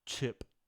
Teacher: Same ch sound, except in English, the paper is blown more.